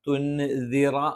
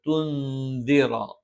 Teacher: സുക്കൂനുള്ള നൂനിന് ശേഷം ദ വന്നാൽ അവിടെ നൂനിനെ അവ്യക്തമാക്കി ഉച്ചരിക്കണം. ഇഖ്ഫാ മറച്ചു മണിക്കുക എന്നാണ് പൊതുവെ പറയാറുള്ളത്.